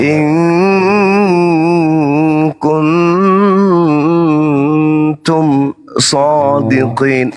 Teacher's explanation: Jadi ikhfa, nun mati harus disamarkan dia dan didengungkan.